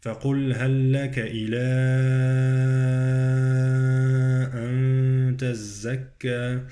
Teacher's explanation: عندي إلى مد 6 حركات وإخفاء في النون